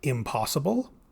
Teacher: before a p the in changes to m · before an l the final consonant of the in morpheme changes to an l